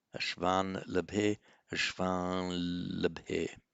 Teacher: you have a nasalization of the a and then a double l